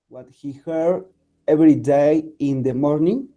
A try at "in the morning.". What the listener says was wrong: In the morning. Punto. O sea, también hay que entonarlo para que sepa uno cuándo empieza o cuándo acaba una frase, ¿no? Entonces, si tú dices in the morning, entonces es como si estuvieras continuando la lectura.